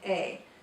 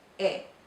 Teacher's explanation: And all of the vowels in Spanish make a short, crisp sound. In English, we might say A and kind of drag it out and have that yes sound on the end, A. But in Spanish, it's E.